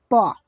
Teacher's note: प का उच्चारण स्थान क्या होता है? ओठ होता है। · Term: ओष्ठ